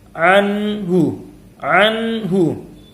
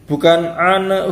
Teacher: yang benar jangan sampai ada pantulannya jangan sampai ada qalqalahnya